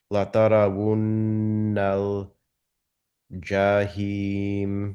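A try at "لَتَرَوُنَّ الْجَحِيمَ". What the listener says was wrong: জাহিম, এখানে হায়ের উচ্চারণটা আরো ক্লিয়ার করবো, লা তারাউন্নাল জাহিম।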